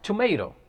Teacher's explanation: it is pronounced from top part of tip of the tongue top part of the tip of the tongue when it hits roots of upper front incisors